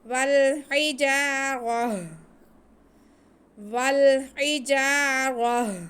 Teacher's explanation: وقف کرنے کے لیے ہم تا کو ہا میں بدل کر ساکن کر دیں گے، تا کو ہا میں بدل کر یعنی کہ تا کے نقطے ختم کر کے اسے ہا بنا کے ساکن کر دیں گے تو وقف ہو جائے گا۔